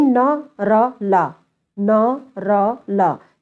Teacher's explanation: तो जीभ ऊपरी मसूड़ों को छू रही है उस समय, इसलिए वर्ष व्यंजन कहलाते हैं, क्योंकि जीभ के दांत के पिछले वाले भाग को वर्ष कहा जाता है, तो जीभ जिन मसूड़ों को यानी वर्ष को छू रही है, इसलिए वर्ष व्यंजन में आएंगे।